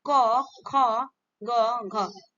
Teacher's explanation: next question, कंठक ध्वनियां व्यंजन कौन से, कंठक ध्वनियां व्यंजन कौन सी है, तो आंसर हो जाएगा आपका क, ख, ग, घ, ये आपके क्या होता है, कंठ से बोले जाते हैं, कंठक ध्वनियां इनको कहा जाता है